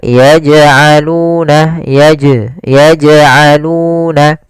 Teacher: di sini jim ada bacaan qalqalah, yaitu huruf jimnya memantul. Maka dipantulkan huruf jimnya, yaitu tapi dengan syarat tidak ada tambahan hamzah, yaitu misalkan yaj'alun, nah itu tambahan hamzah.